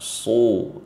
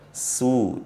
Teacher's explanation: Kalau sod dhammah, su tebal. Kalau sin dhammah, su tipis.